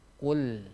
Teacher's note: Qul. Huruf qafnya huruf tebal, sedangkan huruf lam itu huruf tipis